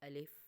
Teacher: الف منہ کے خالی حصے سے ادا ہوتا ہے۔ ٹھیک ہے، اس کا کوئی مخرج نہیں ہے، ہم اس کو لمبا کر کے نہیں پڑھتے، صرف اتنا سا الف۔